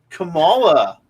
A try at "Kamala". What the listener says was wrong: Kamala. no second A. Kamala.